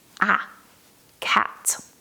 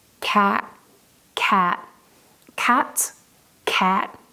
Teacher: In British English, we use the sound A. It's a very short and open sound, like in cat. Imagine you're going to the dentist and you open your mouth wide.